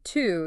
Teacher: your tongue is high but further back